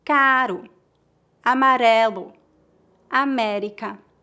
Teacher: Rato, rio, rua. Entre duas vogais, o R tem o som R, mais ou menos como o flap T na palavra water em inglês americano.